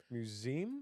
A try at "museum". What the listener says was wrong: He's saying it wrong. He said it with a Z. No, it's a museum.